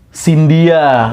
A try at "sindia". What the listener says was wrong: Salah, pengucapannya bukan Sindia. Bukan, Sindia. Iyanya nggak dibaca jelas. Sindia.